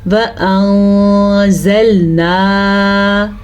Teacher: یاد رکھیں کبھی بھی نون ساکن آئے گا یا آپ کے پاس تنوین آ جائے اور اس کے بعد والا حرف حروف اخفا میں سے آ جائے تو ہم نے نون ساکن کی آواز کو چھپانا بھی ہے اور غنّے کے ساتھ بھی پڑھنا ہے